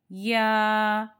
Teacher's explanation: جو زبان ہے، بیچ کا حصہ وہ اوپر کے تالو کی طرف اٹھے گا۔ یا بیچ والا زبان اوپر کی طرف تالو کی طرف جائے گی۔ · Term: شجریہ